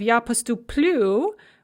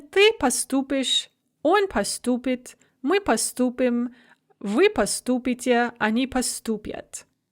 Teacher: the stress shifts one syllable to the front of the verb in all the forms other than the ya form in the non-past.